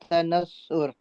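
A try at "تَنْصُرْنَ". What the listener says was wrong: پورا بولو نا بیٹا، رے کی حرکات تو بتائے نا۔ ابھی تو بیٹا ہم سیکھ رہے ہیں نا، اگر ابھی ایسے بولو گے تو لگے گا آخر میں آپ ساکن لگا رہے ہو۔ ابھی ہم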